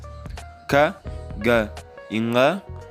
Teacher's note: As consoantes velares são consoantes que, em sua pronúncia, o obstáculo é formado pela aproximação ou contato da língua com o palato mole, também chamado de palatino.